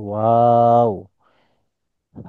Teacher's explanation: ওয়াও এর মধ্যে টান আছে, শুধু ওয়াও বললে হবে না, ওয়াও এর মধ্যে টান আছে